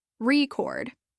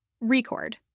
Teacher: when it's used as a noun the stress is on the first syllable record but when it's used as a verb the stress is on the second syllable record · as a noun the stress is on the first syllable record but when it's used as a verb the stress is on the second syllable record misplacing the stress can lead to misunderstandings so it's important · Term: word stress